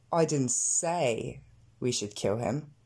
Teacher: Et là, j'accentue le say, à savoir je n'ai pas dit qu'il fallait le tuer, mais peut-être que je l'ai sous-entendu, peut-être que je l'ai écrit, peut-être que je l'ai chanté.